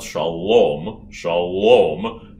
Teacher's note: shalom has the l way back on the hard palate at the top of the mouth